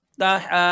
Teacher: मदे मुतसिल को चार से पांच अलिफ के बराबर खींच के पढ़ते हैं